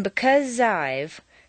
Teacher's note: the Z sound at the end of because and the I sound of I blend together smoothly